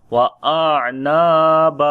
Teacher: noon we long due to alif madda, and when we stop on this place, so this becomes also alif madda